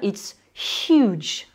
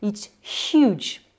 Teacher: Ce H, on va le faire avec une colonne d'air qui passe dans la gorge